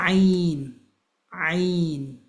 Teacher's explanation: this is coming from the middle of your throat, similar to the place where we did ha, right?